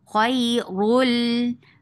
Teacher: this is idgham without gunna so you are not keeping sound in your nose